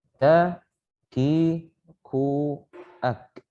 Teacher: hams, itu ada udara yang keluar